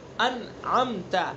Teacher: اس کو یعنی انعمت ایسے نہیں پڑھیں گے، انعمت اس طرح پڑھیں گے. نون ساکن ہے، اس کو بھی صاف ادا کرنا ہے، یعنی اس کے اوپر ہمیں حرکت نہیں دینی ہے. عین کا جو مخرج ہے اس کو اس کے مخرج کے مطابق پڑھنا ہے. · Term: اظہار حلقی